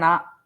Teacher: நாக்க மடிச்சு 3 சுழி ஞான்னு சொல்றோம் இல்லையா தமிழ்ல